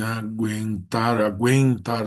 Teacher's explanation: Tu tem o som do u nesse aguentar num ditongo que não é tônico, a sílaba tônica mas é um ditongo crescente.